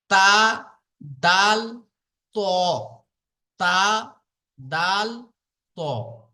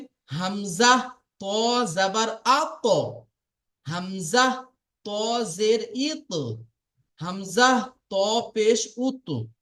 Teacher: জিহ্বার আগা এবং সামনের উপরের দুই দাঁতের গোড়ার সাথে লাগিয়ে উচ্চারিত হয় তা, দাল, ত। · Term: 11 নম্বর মাখরাজ